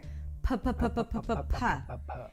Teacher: We're gonna start with a P sound where you bring the lips together and release air.